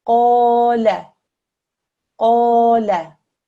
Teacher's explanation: a qaf with a fatha followed by an alif madda. This is stretched out for 2 seconds. The lam with the fatha is for 1 second.